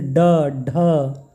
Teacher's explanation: जीभ जिन वर्णों के उच्चारण में जीभ की नोक झटके से तालु को छूकर वापस आ जाती है उन्हें उच्छिप्त व्यंजन कहते हैं।